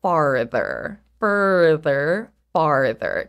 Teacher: if you say further or farther especially in an American accent you can't even hear the difference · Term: our American R